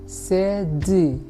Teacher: vokal E yang bunyinya hampir tertutup seperti bunyi I